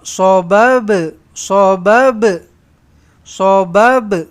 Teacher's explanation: Ha kena lantunkan ba tu lantunkan dia. Okey. Qalqalah sughara.